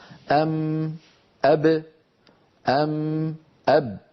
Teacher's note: الميم والباء خرجتا بانطباق الشفتين على بعضهما